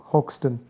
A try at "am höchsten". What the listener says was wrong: Again, the umlaut is back. And the C is back, more importantly.